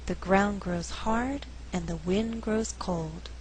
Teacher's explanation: in this faster reading only four content words are being stressed ground hard wind cold the resulting rhythm is 1 and 2 3 and four dun